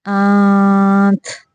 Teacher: کس نون کی آواز کو چھپا کے نکالنا ہے، یعنی ناک سے چھپا کے نکالنا ہے، اور کس کو صرف ظاہر کرنا ہے۔ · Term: اخفا